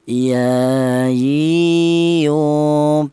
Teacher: huruf ya keluarnya huruf berasal di tengah lidah